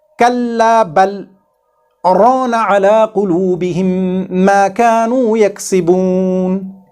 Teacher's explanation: Here, according to the tradition of Imam Hafs bin Asim, we don't have to do idgham of this LAAM Saakinah. Instead, we have to separate this LAAM Saakinah and Ra by a brief pause. So we should read it with Izhar here, like Kalla bal arana ala qulubihim ma kanu yaksibun.